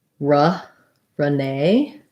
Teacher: nay is going to be stressed and americans will say that with the a diphthong